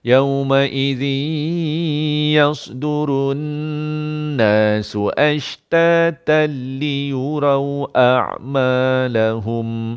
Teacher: Ashtatal, dia tak boleh lambat. Kalau lambat jadi dengung. Di sini tak dengung. Kerana jumpa lam sabdu.